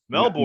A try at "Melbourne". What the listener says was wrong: It's not Melbourne. It's Melbourne. They don't pronounce the R. They don't pronounce the R for some reason. So Melbourne. With my American accent, we want to say Melbourne. It's Melbourne, Australia, but I said Melbourne.